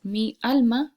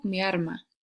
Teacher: este es un ejemplo de cuando la l suena como r · se pierde la distinción entre la L y la r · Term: rotacismo